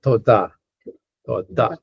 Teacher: Toda. Again, it's accented on the last syllable